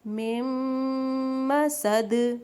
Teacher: مم مسد، میم کے اوپر شد ہے، ہم نے کیا پڑھا تھا، نون پہ شد ہو، میم پہ شد ہو تو ہم غنہ کرتے ہیں۔ مم مسد، دال کے نیچے دو زیر تھی، ہم نے اس کو ساکن کیا، دال پہ جزم لگی تو قلقلہ ہوگا